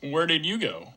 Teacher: the F0 drops down to the end of the question. So it's actually going down in this case.